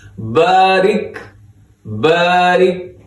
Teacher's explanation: را باریک ہے، با زبر الف با، یہ بھی باریک پڑھنا ہے، تھوڑا سا لمبا کرنا ہے